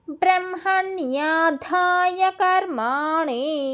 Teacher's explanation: అనాని నాలుకని పైన అంగడికి తగిలిస్తే అనా పడిద్ది మనకి